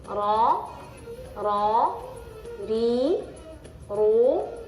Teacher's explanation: ra ini memiliki sifat yaitu tikrar tikrar itu mengulang-ulang jadi ketika ee lidah kita naik ke atas itu atau ke